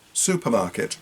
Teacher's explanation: we stress particular syllables so we take supermarket with stressing su and MA